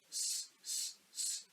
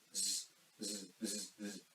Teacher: The sa sound does not require any vibration on vocal cords or throat, so it is unvoiced sound, whereas za requires vibration on our vocal cords, so it is a voiced sound. · But the difference is when you say sa, there is no vibration in vocal cords, whereas for za, there is a slight vibration in vocal cords.